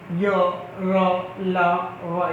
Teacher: अंतःस्थल यानी इनको बोलते समय य, र, ल, व, यानी जीभ के जो बीच का भाग है ऊपर से टकराएगी और अलग अलग जगह से, यानी अंतःस्थल यानी आंतरिक भाग से जब जीभ टकराती है उस समय जो ध्वनि उत्पन्न होती है वो यहाँ से आएगी। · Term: अंतःस्थल व्यंजन